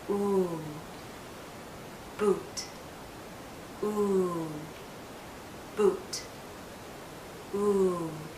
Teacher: Your lips need to be rounded and they're in a tight circle. Pull your lips forward into a small tight circle. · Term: oo sound